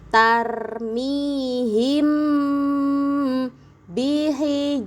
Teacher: Ada mim sukun bertemu dengan ba. Harus dibaca dengung yang lama. Ditahan dulu em-nya itu ditahan dulu yang lama ya.